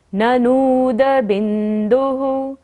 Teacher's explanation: ननूद को लंबा लेना है क्योंकि न के ऊपर बड़े की मात्रा है। और बिंदुः, बिंदु पर विसर्ग है तो ओह करते हुए।